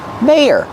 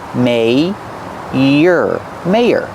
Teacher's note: we have to link these two sounds with y, like in yes and yellow